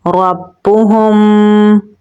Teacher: میم کی آواز کو ناک میں چھپا کر پڑھیں گے